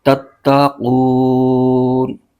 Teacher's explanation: وہاں پر مد عارض ہوگا، یعنی اس کو 3 الف کی مقدار لمبا کھینچ کے پڑھیں گے۔ اب یہاں پر وقف ہو رہا ہے تو یہ قو کو 3 الف کی مقدار لمبا کھینچیں گے، مد عارض ہو، یہاں پر مد عارض ہو رہی ہے، تتقون۔